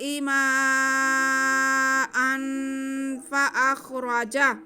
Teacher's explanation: من السماء ماء الذي جعل لكم الأرض فراشا والسماء بناء وأنزل من السماء ماء فأخرج، حمزہ پہ تو زبر کی تنوین، تنوین کے بعد فا حروف اخفا میں سے، یہاں پہ ہم تنوین کی آواز کو ناک میں چھپا کے پڑھتے ہوئے فا کو ادا کریں گے